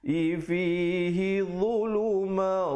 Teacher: dhu di lidah keluar ya, dia macam huruf dad, macam huruf zal tapi tebal ya bacaannya.